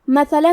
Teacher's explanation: کلمت مثلا میں حرف الثا ہے. ثا کی ادائیگی زبان کے سر اور اوپر والے دانتوں کے اندرونی کناروں سے ہے. کیونکہ میم پہ اور تا پہ زبر ہے تو ہم یہ دونوں زبر کو ظاہر کریں گے اور اسے برابر سے ادا کریں گے۔